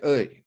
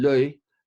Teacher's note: It's a special kind of a sound called a glide, and it is closer in some or other way to a vowel. So think of the y sound in l'œil as being a vowel.